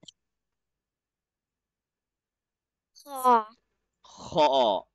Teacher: where do we read the letter kha from? The top throat.